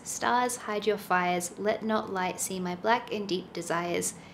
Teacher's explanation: when you consider the sound of it you can hear that it sort of like goes back and forth in this rocking sort of rhythm each second one is stress